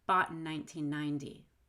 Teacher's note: Now, the word in is unstressed, and when I have an unstressed in syllable after that T, I'm going to make it a held T, not a D.